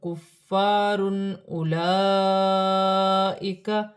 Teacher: دو پیش کی تنوین میں غنہ نہیں ہوگا کیونکہ آگے حمزہ آ رہی ہے، حمزہ حروف حلقی میں سے ہے